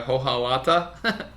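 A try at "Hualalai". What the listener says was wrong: Yeah, the H is silent.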